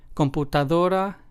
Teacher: in computadora we stress the second to last syllable